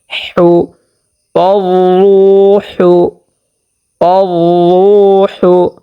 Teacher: হাকে স্পষ্টভাবে উচ্চারণ করতে হবে 2 নাম্বার মাখরাজ হতে, একেবারে স্পষ্ট হলকের মধ্যখান হইতে।